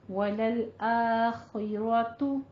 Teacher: تا کے اوپر پیش ہے، دونوں ہونٹ گول.